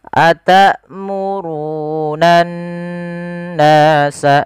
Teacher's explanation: Cara membacanya adalah kita menahan suara n-nya sepanjang 2 harakat. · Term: gunnah